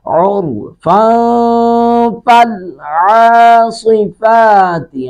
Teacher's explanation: نون تنوین کے بعد اگر فا آ جائے تو اخفا کرتے ہیں۔